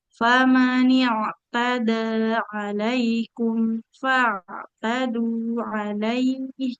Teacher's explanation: Jadi huruf ainnya harus lebih mengalir lagi suaranya. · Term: ain sukun